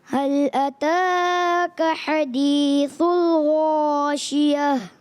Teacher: سا کو موٹا نہیں کرنا ہے نا، غین کو موٹا کریں گے